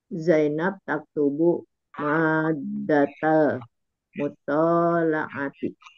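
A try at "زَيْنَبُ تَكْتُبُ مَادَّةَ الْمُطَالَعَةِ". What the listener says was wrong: ini kalau kita sudah ini ya, kalau kita dalam konteks belajar membaca, sebaiknya tidak usah dibisukan akhir kata itu. Jangan Zainab, Zainab, Zainab. Apa mau bu, bi atau bubar atau bibi atau bu.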